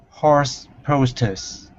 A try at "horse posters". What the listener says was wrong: Very nice. Good.